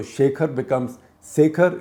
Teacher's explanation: So just as in most parts of Eastern India, Sh will be pronounced as Sa, so Shekhar becomes Sekhar.